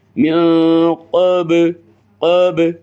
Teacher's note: با بھی حروف قلقلہ میں سے ہے اور ساکن ہے